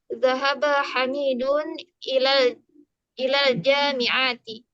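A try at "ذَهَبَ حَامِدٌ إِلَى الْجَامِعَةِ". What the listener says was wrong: A panjang. Zahaba Hamidun.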